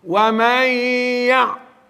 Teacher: idgham ma'al gunna. Nun mati jumpa dengan huruf ya.